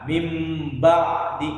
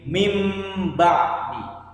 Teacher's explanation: maka nunnya pun tidak terdengar huruf nun tapi berubah menjadi huruf mim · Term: iqlab